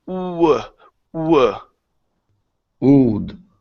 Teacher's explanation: with the word would, you have to start off with an oo sound first. So it's oo, w.